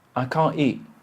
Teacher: The T is not elided unless the speaker goes a step further and does a glottal stop